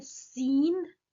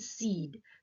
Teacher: Seen is a nasalized vowel, seed is a non-nasalized vowel.